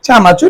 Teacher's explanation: এখানে র কম্পিত ব্যঞ্জন।